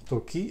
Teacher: we start the first syllable with low or up pitch, and then we change the pitch down if it's up. For example, to-ki, if we say to-ki, then we go down.